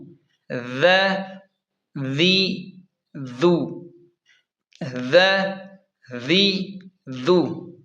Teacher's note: اسے ہم نرم پڑھیں گے، زا اس طرح سیٹی کی طرح تیز نہیں پڑھیں گے، سین ز صاد اس طرح نہیں پڑھیں گے، بلکہ اسے ہم نرم پڑھیں گے۔